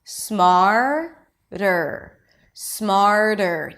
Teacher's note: the flap T appears between two vowels in unstressed syllables, but also between an R and a vowel · if it's hard for you to do the flap T, that really light tap after an R, it's okay if it sounds like a D.